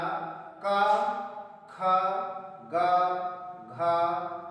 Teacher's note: का वर्ग का उच्चारण स्थान है कंठ।